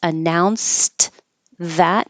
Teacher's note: when you say that word by itself, the ED sounds like a T